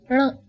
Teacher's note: This may seem to be a difficult sound as it doesn't exist in English. Just try saying ण, but roll back your tongue slightly.